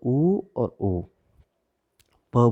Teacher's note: आपने जैसे ऊ बोला, आपके होठों का आकार गोल हो गया है। · तो ऊ और ऊ। प बोलिए, आपके दोनों होठ एक दूसरे को स्पर्श करेंगे, तो दोनों होठ अगर स्पर्श नहीं करेंगे तो प नहीं बोल सकते हो।